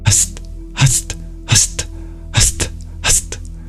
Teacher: when you breathe out and your tongue moves towards your teeth to make a T sound, then your exhale becomes a dental sibilant S.